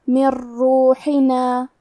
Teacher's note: کلمت من کے آخری میں نون ساکن ہے، پھر حرف الراء ہے کلمت روحنا، را حروف الادغام بغیر غنہ میں سے ہے تو ہم نون ساکن کو را میں ملا کے بغیر غنہ سے لیکن تشدید کے ساتھ یہ حکم کو ادا کریں گے